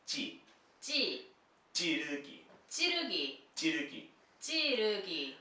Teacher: It's like a double J sound, very tense.